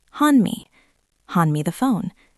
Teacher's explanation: Hand ends in D. Me starts with M. If you keep the D, it stops the flow.